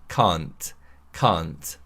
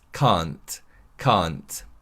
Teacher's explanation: The key to pronouncing this word correctly is that the vowel sound should be a long vowel sound rather than a short vowel sound